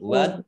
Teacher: Di sini dal sukun ya. Dal sukun bacaan kolkolah atau memantul.